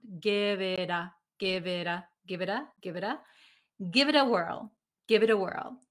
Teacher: you'll notice that this t in it becomes a like a d sound